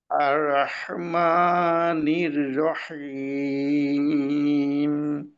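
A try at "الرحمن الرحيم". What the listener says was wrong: জি, রয়ের উচ্চারণটা রায়ের মতো হয়ে গেল কিন্তু। র, র, র, র, আর রহ, প্রথম র।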